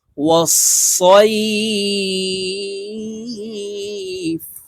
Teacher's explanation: এখানে সই এক আলিফ টেনে ফাকে সাকিন করে ফেলবো, কারণ জবরের বাম পাশে জজমালা ইয়া লিনের হরফ, তো লিনের হরফের বামের হরফে ওয়াকফ হইলে এক আলিফ টানিয়া পড়িতে হয়। তো সই এখানে এক আলিফ টেনে ফাকে সাকিন করে ফেলবো।